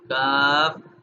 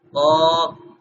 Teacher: پہلے والے کاف کو یعنی ڈنڈے والے کاف کو باریک پڑھا جائے گا اور دو نقطوں والا جو کاف ہے اس کو موٹا کیا جائے گا. موٹا کرنے کے لیے زبان جو ہے وہ ذرا سختی سے لگے گی پیچھے.